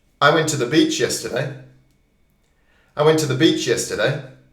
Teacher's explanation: Beach and yesterday that's the main part that's almost all you hear